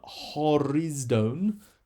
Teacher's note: little letter C shape above the first word first letter horizone that's a rough breathing so it adds an H sound to the beginning of the word